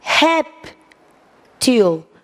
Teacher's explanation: A tônica está na paroxítona. Essa é a mais forte.